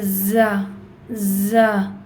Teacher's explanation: زا میں buzzing sound ہوگی اور زا اس طرح ادا کیا جائے گا، اور تھوڑا سا یہ ہارڈ ہوگا۔